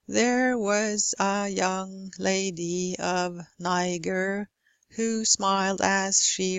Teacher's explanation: Here I stress all syllables. I provide each syllable with equal stress.